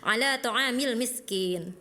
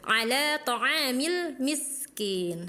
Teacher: harusnya miskin dialirkan karena sin mempunyai sifat urkhah, artinya mengalir.